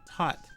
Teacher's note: But most people don't, if they're not from, like, certain parts of the world, more than likely, the H isn't really said. It's more like tot, right? Instead of thought. And that just depends on, and that's also accent, and it depends on where you're from.